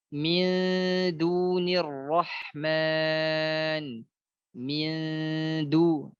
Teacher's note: ketika bertemu dengan dal ini berhati-hatilah agar nun sukunnya tidak dibaca tebal